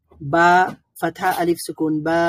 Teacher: আর হচ্ছে যদি ফাতহা এর মধ্যে আ সাউন্ডের পরে আরো একটা আ সাউন্ড, অর্থাৎ ফাতহার পরে আলিফ থাকে, তাহলে সেখানে সাউন্ডটা দীর্ঘায়িত হবে, তখন সেটাকে বলবে মাদ, বা ফাতহা আলিফ সুকুন বা হবে।